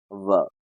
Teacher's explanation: इसमें बोलने के लिए दांतों का भी इस्तेमाल होता है और होठों का भी इस्तेमाल होता है, इसलिए इसका उच्चारण हो जाएगा दंतोष्ठ। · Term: दंतोष्ठ वर्ण